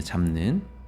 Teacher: 비읍이 니은이나 이응으로 바뀔 수도 있는데 그러지 않고 미음으로 바뀐 이유는 바로 뭐다? 둘 다 같은 입술 소리이기 때문에 바뀐 거다. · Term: 비음화